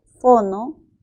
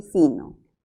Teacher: la o es una vocal posterior y la i es una vocal anterior · i es una vocal anterior pero ojo también sabemos algo más La o es una vocal media mientras que la i es una vocal alta